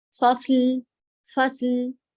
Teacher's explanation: فصل میں آپ زبان کی نوک اوپر ہی چپکا کے رکھیے گا. فصل ل والی ساؤنڈ نہیں آنے دیجیے گا.